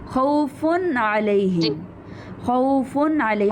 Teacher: एंड में नून को वाज़े करेंगे। ख्वा यहाँ पर तनवीन आ रही है, नून जाहिर नहीं है, हमारे पास नून लिखा हुआ नहीं है, लेकिन हम तनवीन में जो नून है उसको जाहिर करेंगे।